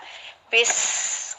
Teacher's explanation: Kita baca harus dialirkan. Setiap ada sin pasti mengalir dengan sendirinya, suara kita mengalir, ada desisan. Bis gitu ya. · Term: hams